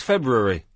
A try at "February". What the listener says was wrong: February. You don't pronounce the R. It's soundless.